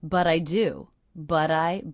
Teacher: I'm hearing that as a flap T or a D sound.